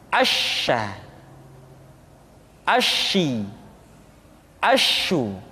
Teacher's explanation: Dan sifat yang dimiliki oleh huruf sya yang paling nampak adalah apa yang disebut dengan sifat at-tafashi, yaitu menyebarnya angin di dalam mulut kita.